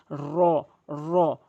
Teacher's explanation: জিহ্বার আগাটি উল্টিয়ে উপরে তালুর সঙ্গে লাগাবেন